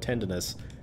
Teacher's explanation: the N in tender, you usually hold out for a bit